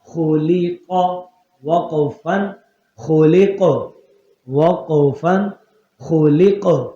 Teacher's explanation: اب خا موٹا ہے قاف بھی موٹا ہے لام باریک کے بیچ میں تو اس کو باریک رکھنا ہے